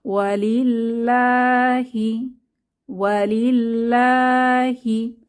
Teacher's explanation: এরপর আছে ওয়া লি, এখানে লামের নিচে কাসরা, অর্থাৎ আল্লাহ শব্দের তাসদিদওয়ালা লামের আগের হরফে আমরা কাসরা পাচ্ছি, তাহলে এখানে পাতলা করে পড়ব